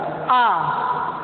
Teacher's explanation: जब आ कहेंगे विवृत मतलब होता है खुला हुआ, तो आपका पूरा मुंह खुल जाता है आ। और अर्ध विवृत आधा खुला हुआ।